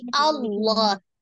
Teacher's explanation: Maka ini kita baca dengan tebal ya. Karena sebelumnya berharokat fathah sebelum lafaz jalalahnya. Jadi Allah dengan tidak merubah huruf lamnya menjadi bunyi huruf waw.